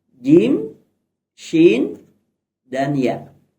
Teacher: jadi ada tiga huruf yang keluar dari tengah lidah kita